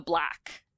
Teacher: the lot vowel starts to move into the ash space.